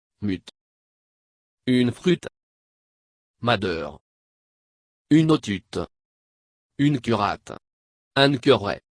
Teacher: la prononciation du U est plus nuancée la prononciation varie entre le U de lune et le E de fleur